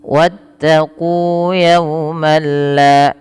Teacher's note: nun dan tanwinnya hilang secara utuh. Jadi tidak boleh lagi dibaca wattaqu yauman la, tapi langsung masuk ke lam, wattaqu yauman la, dan tidak ada penahanan di dalam membacanya.